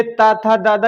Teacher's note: ये ता था दादा क्या है, जीभ का अगला हिस्सा किसमें, दांतों में टच होगा, तो वो हो जाएंगे दंत व्यंजन